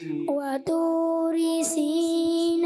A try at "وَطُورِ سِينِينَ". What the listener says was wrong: ایک تو طا کی ادائیگی آپ کی کمزور رہی، اور سینینا سینینا یہ کلیئر آپ سے نہیں ہوا، اس کو آپ نے کلیئر کرنا ہے،